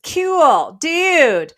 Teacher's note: the tongue is actually moving forward in how that's articulated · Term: back vowel fronting